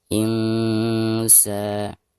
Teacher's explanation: Di sini huruf sin ya. Maka cara membaca nun sukunnya itu harus disamarkan disertai dengan dengung ya. Insa. Ketika membaca sa-nya di sini dipanjangkan dua harokat karena ada harakat fathah sin ya.